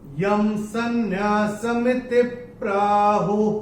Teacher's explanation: अनुस्वार के बाद अगर स आता है तो अनुस्वार का उच्चारण होगा म